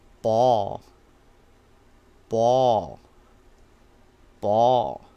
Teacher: It's a mid-rising. It's not high and it's not falling, it's rising slowly.